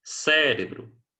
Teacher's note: três sílabas antepenúltima sílaba tônica